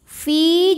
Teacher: Ya Sukun didahului kasrah panjang fi-nya dua harakat namun dibaca panjangnya ini hanya saat berhenti saja saat wasal Finya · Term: Mad Thobi'i